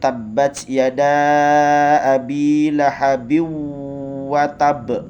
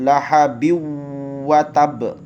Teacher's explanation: Tanwin ba bertemu dengan huruf wa, maka dileburkan dan didengungkan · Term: idgham bi khunnah